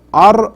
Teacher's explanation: Ra should be pronounced heavy or with tafkhim, because when Ra is sakin, the letter before has a fatha or dhamma, you pronounce it heavy or with tafkhim.